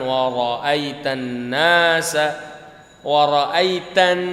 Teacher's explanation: Wa ra'aital ini dibaca tafkhim, dibaca jelas karena depannya huruf waw ada baris fathah bukan kasrah. Kemudian maksudnya ditebalkan wa ra'aitan nasa wa ra'aitan.